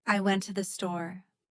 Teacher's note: the stress on went changes the meaning. It might mean that I actually went, and I didn't just plan to go.